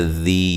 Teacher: ذی یا مدہ ہے، ذال کو نرم ادا کرنا ہے